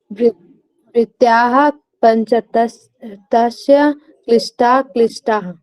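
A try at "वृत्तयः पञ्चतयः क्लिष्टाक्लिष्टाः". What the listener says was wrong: ध्यान दीजिएगा, तस्य नहीं है, क्या है, तय्या है, पंचतय। हाँ, या का उच्चारण करना आपने जी।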